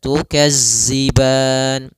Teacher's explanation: Maka latihannya agar tidak terbaca dengan huruf zai, itu ujung lidah kita menempel dengan gigi seri atas sehingga terdengar dengan sempurna untuk makhraj daripada makhraj huruf dzal. Kemudian pada lafal ban, di sini ada bacaan mad arid lis-sukun, yaitu mad yang kita baca di akhir bacaan kita apabila ada, yaitu sukun yang dia sukun arid.